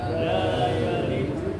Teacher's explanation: La jangan lupa ya, panjang dua harakat.